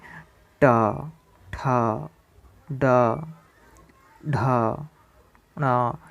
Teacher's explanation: इस मूर्धन्य वर्ण इसीलिए कहते हैं क्योंकि इसका उच्चारण हम मूर्धा से करते हैं